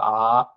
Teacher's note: ஆகாரமும் அ ஆ இந்த ரெண்டுமே அங்காத்து பிறக்கும் அப்படின்னு சொல்றாங்க தமிழ்ல அங்காத்துனா வாயை திறந்து நல்லா ஆ அப்படின்னு திறந்தீங்கன்னா அப்படி வரும்போது அங்காத்து பிறக்கும்